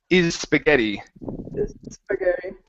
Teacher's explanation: combine the s on is and the s on spaghetti